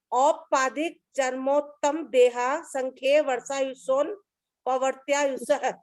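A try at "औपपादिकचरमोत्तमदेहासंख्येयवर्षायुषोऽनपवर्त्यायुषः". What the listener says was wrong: युषोन नहीं, वर्षा युषो नपवर्त्य आयुष। वर्षा युषो नपवर्त्य आयुष। वर्षा युषो नपवर्त्य आयुष।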